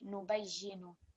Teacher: because we carry the shadda on the ya, this will be extra emphasis on that ya